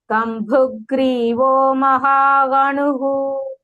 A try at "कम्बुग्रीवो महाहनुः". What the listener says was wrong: Bhagini, Kambhu, that bha is not Mahaprana. Kambhu Grivo Mahahanu.